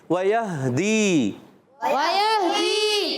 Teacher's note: واو کی ادائیگی ہونٹوں کی گولائی سے، یا کو ہا سے ملائیں گے، ہا کی ادائیگی کلیئر کریں گے، وَيَهْدِي۔